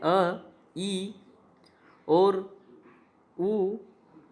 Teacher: ह्रस्व यानी कि उच्चारण में कम समय लगता है, उच्चारण में हवा से मुख से कम वायु बाहर आती है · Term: ह्रस्व स्वर